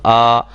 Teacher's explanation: آ دیکھو نا، آ، اب اس میں کوئی چیز نہیں لگ رہی، آواز جو آخر میں آتی ہے نا، اس میں کوئی بھی دانت یا زبان کا کوئی حصہ کسی کے ساتھ نہیں لگ رہا، خالی حصے سے ادا ہو رہا ہے۔ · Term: الف مدہ